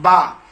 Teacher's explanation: دونوں ہونٹ مل کر کے با ادا ہوتے ہیں